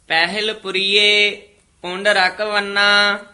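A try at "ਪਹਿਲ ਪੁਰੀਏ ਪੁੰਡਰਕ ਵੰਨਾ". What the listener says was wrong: ध्यान नाल उच्चारण करना, पहल नहीं कहना, पहल हाहे दी से आ रही है। पहल पुरिये इथे विश्राम, पुंडरक उत्ते टिप्पी हैगी है, कस के बोलना है। पुंडरक वना, वना पुला ही बोलना।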